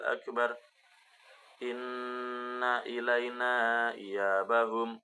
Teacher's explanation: ada bacaan ghunah di mana tasid pada huruf nun inna